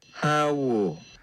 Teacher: I don't really hear that as diphthongy as the vowel we get in English. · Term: monophthong O